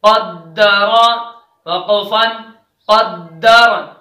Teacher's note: قاف دال زبر قد، دال زبر د، قد، را زبر را، قدر، وقفن قدر۔ دیکھیے را کا زبر گر گیا، را ساکن رہا اور را موٹا پڑا جائے گا